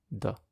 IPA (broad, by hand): d